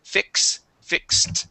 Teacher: this is an X sound you're going to pronounce a k and an S